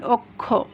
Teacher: তাহলে এখানে কয়ে মূর্ধন্য ষ একটা যুক্ত ব্যঞ্জন আমরা উচ্চারণ করছি, কিন্তু এর উচ্চারণটা কি হচ্ছে ক্ষয়ের মতো। আবার এই কয়ে মূর্ধন্য ষ যদি শব্দের মধ্যে কিংবা শেষে থাকে তাহলে তার উচ্চারণটা হচ্ছে ক খ একসাথে তার মতো। · এবার আমরা রুলসে কি বলেছিলাম, যে প্রথমে যদি শব্দের প্রথমে যদি অ থাকে আর তারপরে যদি এই ক্ষীয় থাকে, কয়ে মূর্ধন্য ষ যুক্ত ব্যঞ্জন থাকে, তাহলে আগের এই অটা ওতে পরিণত হবে